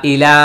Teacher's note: ইলা 3 আলিফ টান, এই ইয়াটা উচ্চারণে আসবে না